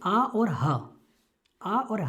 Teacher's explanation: आ और हा का उच्चारण स्थान क्या बताया, कंठ बताया।